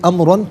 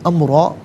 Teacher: را پر دو زبر کی تنوین وقف میں الف سے چینج ہو جاتی ہے، امرا پڑھا جائے گا۔